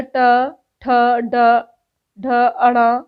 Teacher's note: यह मूर्धन्य हमारे कठोर तालू से अगले भाग से है